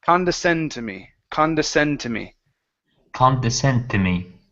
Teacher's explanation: So this is the stress. The main accent is going to go at the end of the word. Okay, but it's like we're saying ba-da-da.